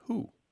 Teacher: w w and it's followed by certain vowel sounds sometimes that W sound collapses into the vowel it's just a mechanical thing that's easy for mouths to do